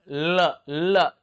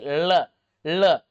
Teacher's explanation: हवा जीभ के दोनों बगलों से पार्श्व से निकल जाती है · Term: पार्श्व व्यंजन